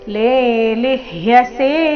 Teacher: ಮೊದಲನೇ ಅಕ್ಷರ ದೀರ್ಘ ಇದೆ ಲೇ, ಎರಡನೇದು ಹ್ರಸ್ವ ಲಿ, ಮುಂದೆ ಅರ್ಧ ಪೂರ್ತಿ ಯ ಸೇರಿ ಸಂಯುಕ್ತ ಅಕ್ಷರ.